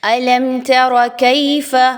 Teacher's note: تا اور را دونوں پر زبر ہے، آپ نے ان دونوں کی حرکات کو بہت کم پڑھنا ہے، لمبا کر کے نہیں پڑھنا، کھینچ کے نہیں پڑھنا۔ کاف زبر یا کئی، یا لین آ گیا، 1 سے 2 الف کے برابر اس کی ادائیگی رکھیں گے